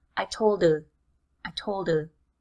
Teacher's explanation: That H at the beginning of her is completely gone.